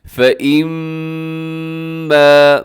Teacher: میم مشدد ہے، یہاں پر آپ نے غنہ کرنا ہے اور اس کو لمبا کرنا ہے کیونکہ الف بھی ساتھ ہے